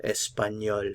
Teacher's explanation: normally we don't pronounce consonants at the ends of the words but the L is an exception we will pronounce the L